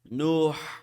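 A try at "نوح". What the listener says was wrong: Not Nuhu. It's Nuh.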